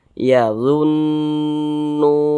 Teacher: sukun kalau dia memiliki tanda baca damah huruf tersebut dibaca panjang NU dibaca panjang Mad thi'i panjangnya dua harakat